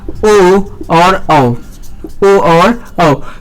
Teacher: तो ओ और औ का उच्चारण स्थान क्या है, कंठोष्ठ है।